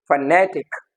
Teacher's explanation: and the stress is on ne